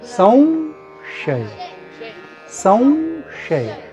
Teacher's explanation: साध्या भाषेत जर लिहायचं झालं, हा व यामध्ये आला पाहिजे, म्हणजे ह्याचा उच्चार संशय. संशय व सारखा उच्चार आला पाहिजे अनुस्वाराचा.